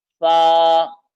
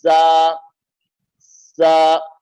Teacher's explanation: सा, दांतों का सिरा, जबान का सिरा लगेगा, और जा को दोनों दांतों को बंद करके अदा करेंगे